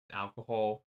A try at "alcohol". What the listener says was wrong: Alcohol. Why are you putting so much emphasis on the H?